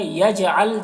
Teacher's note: یجعل جیم میں قلقلہ ہوگا